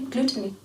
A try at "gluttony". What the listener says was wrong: It's gluttony. Gluttony sounds like you're saying gluten. I don't think that's how you say that.